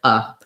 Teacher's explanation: our letter E is turning into an unstressed, reduced schwa